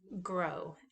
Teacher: It's produced in the same place, but one is voiced and one is unvoiced. So the g, or the lowercase g, is a voiced velar stop